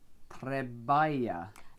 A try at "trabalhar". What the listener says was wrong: It's an A sound, trabalhar. Treballa. Trabalhar. No, not in that not Yeah, trabalhar. Trabalhar, yeah.